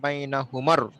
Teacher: মিমটা এসে সরাসরি রকে ধরে ফেলবে, বাইনা হুমার।